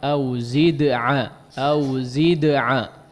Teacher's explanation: Selesaikan dulu qalqalahnya ya, zid'a ya, baru masuk kepada ain.